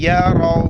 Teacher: را موٹا کر کے پڑھیں گے